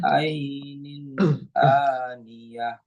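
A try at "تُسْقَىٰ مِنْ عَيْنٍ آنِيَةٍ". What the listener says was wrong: Agak kepanjangan. Tusqamin. Jangan kepanjangan.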